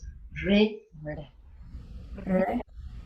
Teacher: And now this one, when you've got that dot under, that tongue is going to curl up into the palate. And so it's like rolling the R's.